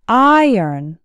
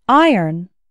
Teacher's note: And the second syllable actually sounds like earn, iron. Iron has two syllables, and the stress is on the first syllable, so it sounds like iron.